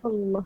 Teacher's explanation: So makhraj dia adalah hujung tepi lidah.